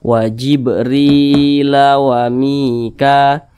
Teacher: Maka huruf ro ini dibaca panjang karena dia berbaris ke bawah dan posisinya tepat berada di belakang huruf ya sukun. Namanya mad tabi'i, panjangnya 2 harakat atau kira-kira 2 ketukan.